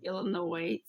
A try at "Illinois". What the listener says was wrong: Illinois with no S.